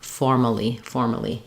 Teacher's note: Versus in formally, now we don't have an and letter A is completely unstressed. It's just the schwa sound